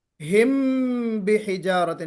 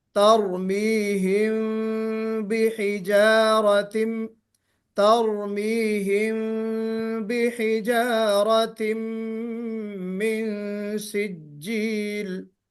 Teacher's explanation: تو جی میم کے بعد ترمیہم، ایک تو طریقہ جو لوگ پڑھتے ہیں ہم بحجارت، یعنی ہونٹوں کو جما کر نکالتے ہیں میم کو. ہونٹوں کو جمانا نہیں ہے بلکہ ہمیں ہلکا کھلا رکھنا ہے. ترمیہم بحجارت، ترمیہم بحجارت من سجیل، اس طرح پڑھنا ہے. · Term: اخفاء شفوی